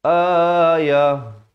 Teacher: ta marbutah kalau waqaf dia ditukarkan kepada bunyi ha